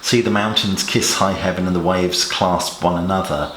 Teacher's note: the sibilant S sound could almost recreate the sound of the winds and the waves